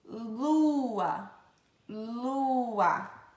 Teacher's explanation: a língua vai para o céu da boca